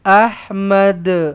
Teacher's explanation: Kena lantunkan dal nilah. Qalqalah kubra kalau berhenti. Jangan Ahmad.